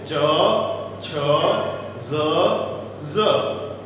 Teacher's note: તાલવ્ય વ્યંજન બોલતી વખતે આપણી જીભ સહેજ ઊંચી થાય છે, તાળવા સાથે અથડાય છે અને ફેફસામાંથી બહાર આવી રહેલી હવાને રોકે છે, અવરોધે છે અને એક વિસ્ફોટ સાથે એ વ્યંજનો ઉચ્ચારાય છે. · તો અહીંયા આ વ્યંજનો તાલવ્ય વ્યંજનો જ્યારે બોલીએ છીએ ત્યારે આપણી જીભ તાળવા સાથે ઉપર ઉઠી અને અફળાય છે અને ગળામાંથી બહાર નીકળી રહેલી હવાને અવરોધી અને એક સ્ફોટ સાથે વિસ્ફોટ સાથે છોડે છે